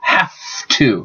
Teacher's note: the second sound colors the first often voice to not voice · So the V changes to F, so have to, because F and V are formed the same way. The only difference is the vibration in the throat. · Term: regressive assimilation